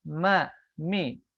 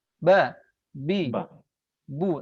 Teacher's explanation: Kalau mim dia sifatnya bukan syiddah, kalau ba itu adalah sifatnya adalah asyiddah, kuat.